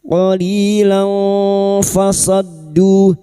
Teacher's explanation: fathah tanwin bertemu fa ikfa hakiki kita samarkan bunyi fathah tanwin dan mendengung selama tiga harakat qolilan fasaddu fasaddu huruf shad masuk ke huruf dal yang bertasdid